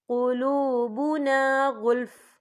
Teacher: یہ دیکھیں آپ کو چھوٹی سی توئی لکھی نظر آ رہی ہے، تو یہ فی مطلق کی علامت ہے، تو یہاں پہ ٹھہرنا بہتر ہے. وقف کی صورت میں فا ساکن ہو جائے گا